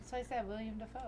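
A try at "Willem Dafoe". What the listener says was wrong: Willem. No, it's not spelled William. It's spelled Willem.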